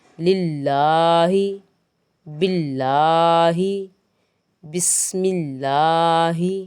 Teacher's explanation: ہا زیر ہی، اس کو بھولے سے بھی موٹا نہیں کرنا